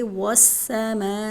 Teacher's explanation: مد متصل ہے حروف مدہ کے بعد حمزہ اسی کلمے میں ہے تو یہاں ایک بڑی مد ہے اس کو 5 الف کے برابر لمبا کریں گے